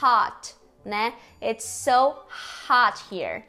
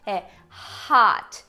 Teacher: ele soa como um O pra gente, mas a boca tá mais aberta e a língua tá mais baixa, que é o de hot, né?